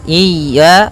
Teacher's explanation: Hati-hati jangan sampai memanjangkan ya-nya atau tidak mentasydidkan ya-nya. Wa iya pada lafal ya ada mad tabi'i, yaitu berupa fathah bertemu alif, panjangnya 2 harakat